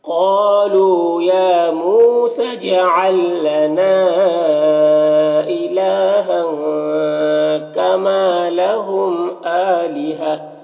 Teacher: آلیہا، حمزہ میں کھڑا زبر ایک الف کے برابر کھینچیں گے اور یہاں پر گولتا ہے تو وقف کریں گے تو یہ گولتا ہائے ساکنہ سے بدل جائے گی۔ تو اس طرح سے پڑھیں گے.